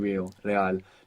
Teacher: An initial R, like in regular, in most Spanish dialects, it's a rolling R. You get this flick of the tongue.